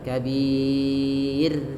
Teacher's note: Ra, hati-hati karena ra sebelumnya di sini huruf sukun, ya sukun, dan sebelumnya kasrah, maka ra-nya dihukumi dengan ra tarkik, yaitu ra tipis.